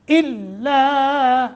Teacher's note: الا لام مشدد ہے ذرا مضبوطی کے ساتھ